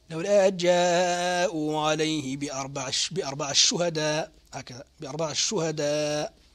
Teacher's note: ندغم للسوسي التاء هنا في الشين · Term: الإدغام